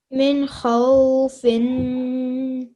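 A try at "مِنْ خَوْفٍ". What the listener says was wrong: Excellent, well done.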